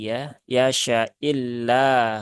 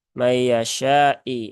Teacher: huruf syinnya itu dibaca pendek ya karena ini adalah Hamzah ya bukan Alif